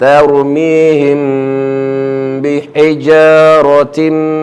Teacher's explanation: mim mati jumpa dengan ba, mati. So di sini kena dengung. · Tim di sini tanwin jumpa dengan mim pun gunnah, kena dengung 2 harakat.